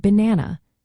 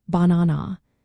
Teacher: the second syllable na gets the emphasis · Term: stressed syllables